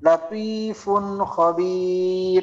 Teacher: নুন সাকিন বা তানবিনকে আমাদের স্পষ্ট ভাবে গুন্না ছাড়া আমরা যেভাবে নরমাল ভাবে পড়তাম ওইভাবে পড়তে হয় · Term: ইজহার